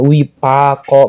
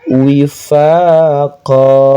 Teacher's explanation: Jadi makhraj fa itu bukan seperti bapak ya, tapi pakai f ya, f. Wifaqo, panjang lagi 2 harokat, namanya mad iwad.